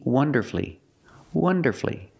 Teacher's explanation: So when you see F-U-L-L-Y, don't pronounce that U. Shorten the word and make it three syllables.